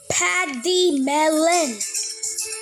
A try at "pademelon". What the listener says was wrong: Nope, not quite. You're saying it as patty instead of paid.